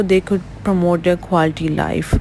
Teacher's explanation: group your tone was slightly higher telling me you're not done then when you got to the end of the sentence your tone fell